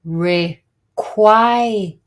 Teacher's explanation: the main stress here in this word is the second syllable, not the first